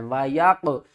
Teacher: قاف کے اوپر قلقلہ بھی کرنا ہے اور قاف کو موٹا بھی پڑھنا ہے